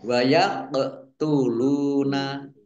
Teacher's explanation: qaf sukun bacaan qalqalah dibaca memantul ditampakkan pantulannya